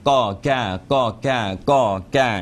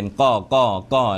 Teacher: คล้ายๆกอไก่แต่ลงไปลึกหน่อยนะครับเพราะกอไก่เนี่ยเราจะไม่ลึกถึงโคนลิ้นนะฮะ เพราะฉะนั้นก็ลงไปให้มันลึกเป็นก้อก้อก้อแล้วก็ก้าก้าก้าก้าก็พ่นลมนะฮะที่เดียวกันแต่ว่